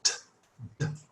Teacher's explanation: There's probably a bit more air with the T, so that's a bit more plosive.